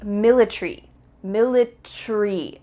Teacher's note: In American English, you're going to pronounce each of the final letters, A-R-Y, military. In British English, they often cut out the A. So instead of military, it would be military, military. That A is just gone.